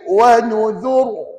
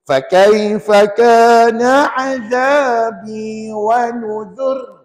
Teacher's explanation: Kalau nak berhenti, di sini kita ada pilihan. Kalau wakaf, kita ada pilihan sama ada ra tebal ataupun nipis.